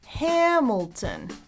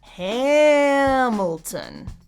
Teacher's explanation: Hamilton, three syllables, and the first one is stressed